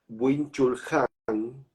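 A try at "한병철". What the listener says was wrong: Hambyong-Hol, Hambyong-Hol en coreano. El Han se pronuncia primero, Hambyong-Hol.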